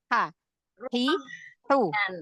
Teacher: Huruf H yang dari tengah tenggorokan.